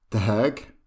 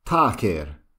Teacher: we can see this change from the breathy D to the T sound.